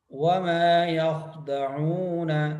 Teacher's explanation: خا کے اوپر قلقلہ نہیں کرنا، خا کو پر کرنا ہے. وما یخ نہیں پڑھنا.